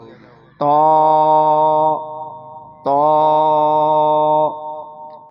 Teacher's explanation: ہونٹ کو گول نہیں کریں گے کیونکہ تا کا جو لکھا گیا ہے تا کے بعد اس میں الف ہے، یہ دیکھیں تو یہ ہونٹ سیدھے کھلیں گے اور ہونٹ گول نہیں ہوں گے، منہ کے اندر سے آواز موٹی ادا ہوگی